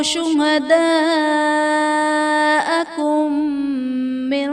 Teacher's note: شہداءکم من میں میم ساکن کے بعد دوسری میم ہے تو یہاں پر ادغام شفوی کا قاعدہ ہوگا، یعنی میم ساکن میں ہم غنہ کر کے پڑھیں گے۔